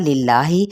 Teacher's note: وللہ، واو ہونٹوں کی نا تمام گلائی کے ساتھ، للہ اس میں جلالہ باریک پڑا جائے گا